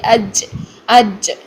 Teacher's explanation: जब हम वस्तुल लिसान को, ज़ुबान के दरमियान को फ्रंट तालू के पास ले आते हैं तो हमारी सांस की साउंड पैदा होती है, जिससे कि हमारी चे वाली साउंड निकलती है, जैसे कि अज अज ये निकलती है, जैसे अर्रजीम, जीम नहीं, ठीक है।